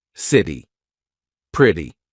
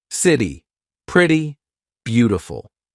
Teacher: the quick D all right but it's called the flap T this is when T sounds like a very quick D very big in American pronunciation so when the letter T is in between two vowel sounds